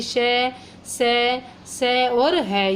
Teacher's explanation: ऐसे ही ऊष्म व्यंजन होते हैं। इन व्यंजनों के उच्चारण में श्वास तीव्र गति से मुख से रगड़ खाती हुई बाहर निकलती है और ये ऊष्म व्यंजन कहलाते हैं।